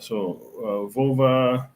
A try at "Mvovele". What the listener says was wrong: You keep the V, you just add your nasal, yeah? MV.